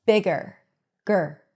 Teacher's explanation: So the R takes over the schwa and you hear an R sound. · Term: schwa R